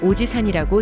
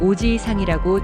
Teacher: 지는 한 박자로 짧게 발음됩니다. · 지 뒤에 이를 길게 늘려서 발음합니다. 이때 지이는 두 박자처럼 발음되어야 합니다. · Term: 장음